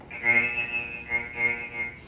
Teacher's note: It's very high and nasal, buzzy, electronic. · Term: F3